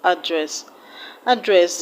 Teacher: the first syllable is a schwa sound, so you do not stress a schwa sound